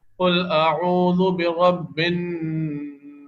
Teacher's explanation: دیکھیں نون اور میم کی آواز کیسے غنہ ہوتی ہے اس کو یہاں دیکھ لیتے ہیں. جیسے کہ یہ نون مشدد ہے اور نون مشدد پر غنہ کیا جاتا ہے